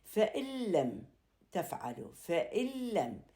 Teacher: إذا وقع حرف اللام أو الراء بعد النون الساكنة أو التنوين راح يصير إدغام، ولكن ما بي غنة · نلاحظ باللوحة فإن لم تفعلوا، فإن لم، إذن انتغمت النون بحيث ما ظهرت النون نهائي وصار عندها إدغام، لأن إجا وراها حرف اللام الإدغام كامل ولا يوجد فيه غنة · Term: الإدغام بلا غنة